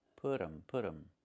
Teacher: We make a reduction. We say put them. The t changes to a fast dy.